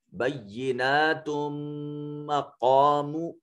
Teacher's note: قاف صفت استعلاء ہونے کی وجہ سے اس کو مفخم اور پر کر کے پڑھا جائے گا